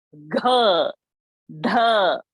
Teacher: While saying gh, the sound is coming from the throat. Tongue is not touching the teeth.